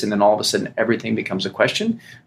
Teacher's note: they have upspeak or upward inflection